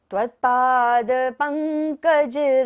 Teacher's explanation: पंकज में हमें अंग की तरह लेंगे बिंदी को